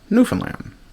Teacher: It's a generational thing, but just exactly what the dividing line is, I don't know. But if you're born after 1970, chances are you primarily put the stress on the first syllable